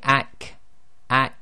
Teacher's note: it's a sudden sort of collision and stoppage of uh the sound itself